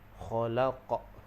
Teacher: Kalau tak ada syaddah, maka namanya qalqalah kubra. Jadi bagi dia lantun sederhana berbanding dengan akbar.